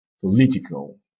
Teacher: Maintenant, prenons un mot de la même famille, political. L'accent est sur la deuxième syllabe.